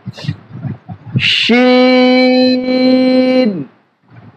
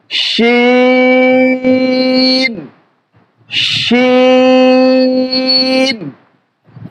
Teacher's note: এখন এই হরফটি উচ্চারণ করব জিহ্বার মধ্যখান, তার উপরে তালুতে লেগে দেব শিন এবং মুখ ভরে উচ্চারণ করব, মুখটা ভরে উচ্চারণ করব শিন।